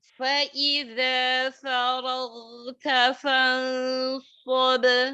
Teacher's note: Tebal dia ya. Fansab karena pengaruh lidah yang terangkat. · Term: ikhfa